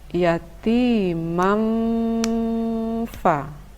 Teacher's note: bacaan dengung dibaca selama sekitar 3 ketuk